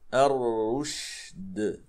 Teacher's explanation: قبل أن نقلقل الدال ننتبه إلى الشين الساكنة. الشين أيضا مهموسة ورخوة وفيها التفشي · الدال حرف من حروف القلقلة، إذا سكنت لا بد لنا من أن نقلقلها